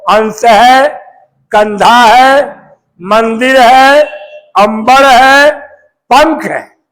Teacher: अनुस्वार वर्ण का उच्चारण स्थान नाक से की जाती है